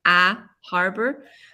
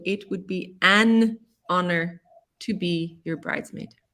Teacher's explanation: But with honor, the H is silent